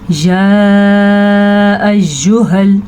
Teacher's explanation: یا کے اوپر جو مد ہے، یہ 6 حرکات عربیہ ہیں آپ کے پاس، 6 سیکنڈ تک آپ نے اس کو لمبا کرنا ہے